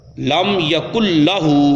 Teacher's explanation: لام میں وہ مدغم ہو جائے گا نون ساکن یا نون تنوین، اور بغیر غنہ کے پڑھا جائے گا